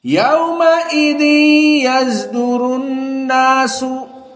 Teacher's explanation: Usul yang pertama ismam sod. jadi dibaca zai.